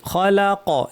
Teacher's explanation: খফ ভারী, লাম পাতলা, কফ ভারী। খলাক এখানেও কফে কলকলা হবে।